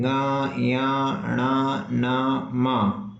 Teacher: इनका जब भी उच्चारण होगा तो नाक में एक स्पंदन होगा एक झनझनाहट सी होगी तब इनका सही उच्चारण होता है तो अनुनासिक कहलाते हैं ये तो ऐसे आपके जितने व्यंजन होते हैं उन सभी की परिभाषा दे दी गई।